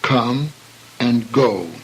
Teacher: they commence with the consonants which are pronounced farthest back in the mouth known as the gutturals